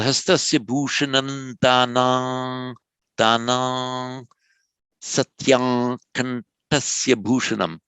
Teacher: Now, because we're at the end of a pada here, the caesura, you can pronounce the danam as an ordinary M, or optionally you can carry it on. Now, what happens to the anuswara before a sibilant, before an S? It becomes more like a nasal.